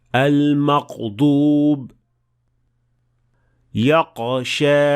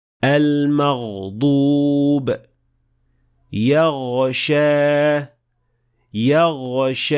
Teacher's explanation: غائن کی آواز کو روانی سے چلنا چاہیے اور اس میں جاری رہنے کی صلاحیت ہونی چاہیے